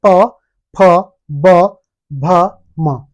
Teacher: दोनों ओठों को मिलाकर ओष्ठ व्यंजन का प्रयोग हो रहा है।